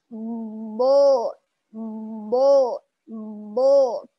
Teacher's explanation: Jadi makhrajnya huruf bod adalah dari sisi lidah bertemu sepanjang gigi geraham. Jadi dialirkan dari gigi geraham yang paling belakang sampai ke depan.